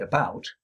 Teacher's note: the first syllable of about, the schwa there, is produced on the build-up to the breath pulse